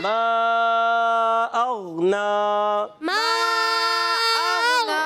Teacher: उर्फ़ मद्दा के बाद हमज़ा दूसरे कलमे में मद्दे मुनफसिल कहते हैं। 2-2.5 अलिफ यानी 4 या 5 हरकात खींच कर अदा करते हैं।